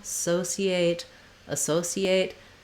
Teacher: our first vowel is going to be vowel schwa it's short and a reduced vowel